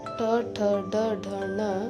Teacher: ಈ ವರ್ಣಗಳು ನಾಲಿಗೆ ಮೇಲ್ಭಾಗವಾದ ಮೂರ್ದ ಎಂಬುವುದರ ಸಹಾಯದಿಂದ ಹುಟ್ಟುತ್ತವೆ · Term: ಮೂರ್ಧನ್ಯ ವರ್ಣಗಳು